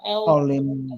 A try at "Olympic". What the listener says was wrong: Ly should be